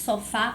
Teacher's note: Sofá, o fá é a sílaba tônica, então é o acento tônico.